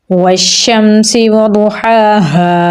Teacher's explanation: हा को गले के दरमियान वाले हिस्से से निकालेंगे। खड़ी ज़बर है तो लंबा पढ़ेंगे।